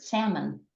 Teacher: no one pronounces the L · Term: silent L